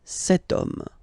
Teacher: as in French, H is not pronounced, so the first sound that we hear is O, okay? And then it will follow the same rule.